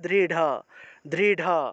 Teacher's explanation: আসলে নেই ঠিক আছে এই র টা আসলে সংস্কৃত ভাষায় নেই সংস্কৃত ভাষায় এই র এর পরিবর্তে ঢ উচ্চারণ করা হয়